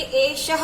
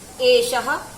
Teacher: इन विसर्गों का जो उच्चारण होता है वो ह ध्वनि से होता है।